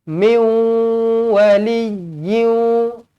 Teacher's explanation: masuk dekat huruf waw, kena muncungkan bibir. Dengungkan 2 harakat.